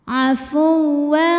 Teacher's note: Kana afu, masuk ke waw pakai nabar, kita naikkan intonasi kita.